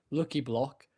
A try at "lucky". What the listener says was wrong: Because it doesn't sound like you're saying lucky. It sounds like you're saying looky. Lucky. Lucky block.